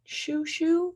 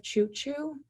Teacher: substituting that CH for an SH to make shoo shoo. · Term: deaffrication